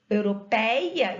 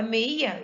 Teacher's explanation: eu falo europeia e abro bem a boca. Agora, meia, eu fecho a boca, ditongo fechado. Assim como aldeia, baleia, cadeia, certo?